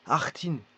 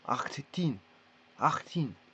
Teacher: Bien qu'il y ait un doublement, voilà, ça se lit de manière courte.